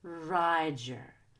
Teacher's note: Make sure ride is higher pitched and more stretched out than the word your.